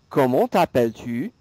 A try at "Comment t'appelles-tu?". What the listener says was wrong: Oui, and stretch out the t'appelles a little bit.